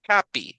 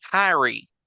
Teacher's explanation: la H sí tiene sonido, pero casi siempre va a tener un sonido como de J